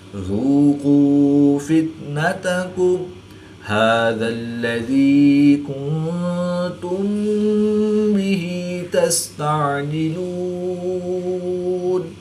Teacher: میم ساکن کے بعد حرف با ہے تو یہاں پر اخفا شفوی ہوگا، یعنی غنہ زمانی کر کے پڑھیں گے۔